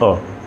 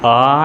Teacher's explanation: आप अ बोल रहे हैं, उसकी मात्रा ज़रा बढ़ा दीजिए तो आ निकल जाएगा